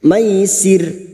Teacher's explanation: kita maka bunyinya maisir ro yang dibaca wakaf yang didahului kasrah kita baca tarkik atau tipis maisir dengan ciri-ciri bibir yang tersenyum